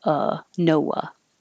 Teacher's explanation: the ah is not stressed so americans will change that to uh